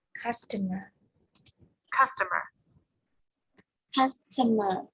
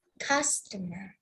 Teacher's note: the stress is the first syllable